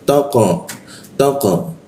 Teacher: Nah, huruf qo qo dimatikan itu ee memantul ke arah o. Dia mulutnya a tapi keluarnya o dia